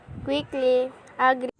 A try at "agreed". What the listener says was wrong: The learner omitted the D in agreed.